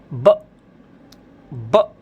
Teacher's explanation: बट यहाँ पर इसको ब नहीं बोलना है, आपको बोलना है ब। दोनों होठों को जोड़िए और एकदम से हवा निकालिए बाहर